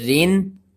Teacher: اگر را کے نیچے دو زیریں آ جائیں تو اس کو باریک پڑھیں گے اور گنہ نہیں کریں گے